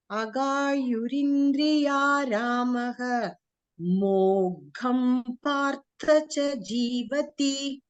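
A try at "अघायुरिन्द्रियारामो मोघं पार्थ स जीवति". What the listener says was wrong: Parthasa Jivati. Not cha.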